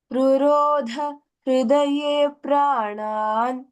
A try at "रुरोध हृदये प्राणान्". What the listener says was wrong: Dvitva there. Hridaye प्राणान्.